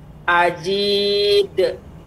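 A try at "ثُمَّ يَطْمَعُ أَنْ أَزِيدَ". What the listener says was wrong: Namun zainya lebih banyak. Zai lebih mengalir tajam. Azid. Jadi d tapi cepat.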